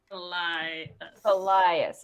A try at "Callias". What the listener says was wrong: There's another syllable in there. Elias.